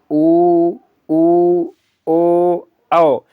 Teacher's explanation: जीभ के पीछे से आवाज निकल रही है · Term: पश्च स्वर